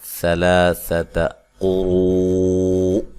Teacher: قاف کو موٹا ادا کرنا ہے اور را کو موٹا ادا کرنا ہے، اور یہ واو مدہ کے بعد حمزہ اسی کلمہ میں ہے، لہذا یہاں مد واجب ہے۔